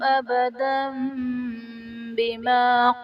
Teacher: تنوین کے بعد حرف با آ رہا ہے تو یہاں پر تنوین کو میم سے بدل کر اخفا کریں گے، یعنی غنہ کر کے پڑھیں گے تو یہاں پر اقلاب کا قاعدہ ہوگا۔